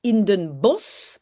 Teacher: Et en fait, le SCH à la fin, on prononce comme S. Hein, in Den Bosch.